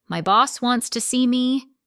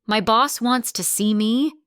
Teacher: with a flat, tired tone, it sounds like you're frustrated or maybe even dreading it.